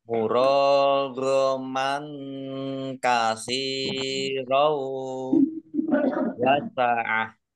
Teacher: Fathah tanwin bertemu dengan huruf wawu idgham di gunnah, masuk dengan mendengung. Ditandai ada wawunya ada tasdidnya, ditahan kurang lebih 2 harokat dan tampak dengungannya.